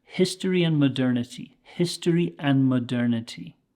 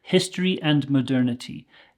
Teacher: that hard D in and we can actually take it away very often